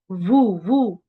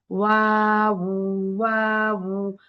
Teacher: দাঁত কখনোই কি হবে না? এই ওয়াও এর মাখরাজের সময় নিচের ঠোঁটে টাচ করবে না।